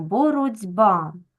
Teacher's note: у нас дзвінки б вимагає від глухого Т перетворитися на дзвінки д бо бородьба і м'який знак нам дає м'якість цього приголосного записуємо